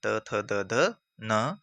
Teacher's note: दंत तो सीधा है कि तवर्ग तो पूरा आएगा, दंत, त थ द ध न, यानी जिनका उच्चारण कर स्थान जिनका उच्चारण करने में हमारी जीभ किसके साथ लगती है, दांतों के साथ लगती है, तो वो क्या आ गया, दंत आ गया। जीभ दांतों से लगती है